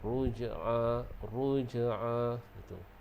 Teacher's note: Dan ruj'a huruf jim tu kita baca dengan qalqalah sughra. Ruj'a bagi dia melantun.